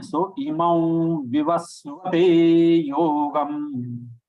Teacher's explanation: we are following the practice of pronouncing it as Wa. Anunasik Wa. Anunasik is nasal.